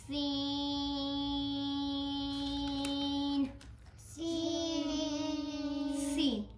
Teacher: ऊपर वाले दो दांत और नीचे वाले दो दांतों के साथ मामूली सी लग जाए, सीन अदा होता है। सीन लेकिन हम सीन को 6 अलिफ के बराबर लंबा करते हैं।